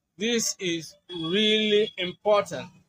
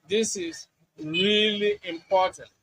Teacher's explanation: You stress the key words really and important.